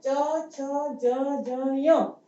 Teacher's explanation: हमारी जिह्वा यानी जीभ जो है वो हमारे तालू से स्पर्श करती है, यानी हमारे मुंह का जो ऊपर का हिस्सा होता है तालू जिसको कहते हैं उसको स्पर्श करेंगे, इसलिए ये जो है च वर्ग उसको तालव्य कहते हैं।